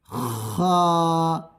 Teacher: খা গলার সম্মুখ থেকে আদায় করবে